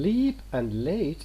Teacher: In leap and late it is clear. A pure alveolar lateral, we pronounce it as L.